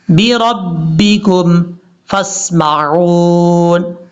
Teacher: فا کو سین سے کنیکٹ کریں گے، بیچ میں آپ کو جو الف نظر آ رہا ہے اس کو چھوڑ دیں گے